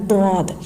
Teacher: जबान की करवट और ऊपर की दाढ़ की जड़ से अदा होता है दद जबान की करवट जैसे हमारी जबान है उसका साइड वाला · زبان کی کربٹ اور اوپر کی داڑوں کی جڑ سے ادا ہوتا ہے ضاد۔ زبان کی کربٹ جیسے ہماری زبان ہے، اس کا سائٹ والا کنارہ ہے، وہ اوپر کی داڑوں کی جڑ پر لگانا ہے اور منہ موٹا کر کے پڑھنا ہے، ضاد۔ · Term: حروف حافیہ